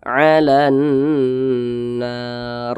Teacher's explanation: Maka cara bacanya itu diidghamkan. Nah, maka huruf lamnya dia tidak terbaca dan di sini tidak ada tanda bacanya kan. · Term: alif lam syamsiyah